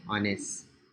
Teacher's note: you can say on his, or you can drop the H sound. So you can say honest.